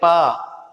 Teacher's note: तो इसमें होठों का योगदान है कि 2 होठ आपस में मिल रहे हैं